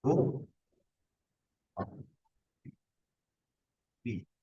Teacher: Nah, lamnya dianggap nggak ada, ro-nya bertasydid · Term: idgham mutaqaribin